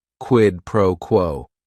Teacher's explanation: each word is only one syllable and if you're saying it together the stress is kind of on that first word and that last word